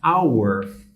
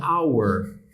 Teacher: né onde a gente vê isso claramente a palavra our né ela começa por H né mas vocês podem notar aqui que o h não é pronunciado